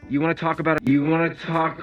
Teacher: phrase you want to is reduced to you want to and the k sound from talk is linked to the next vowel which is a schw sound in the word about talk about · You want to is reduced to you wanna. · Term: connected speech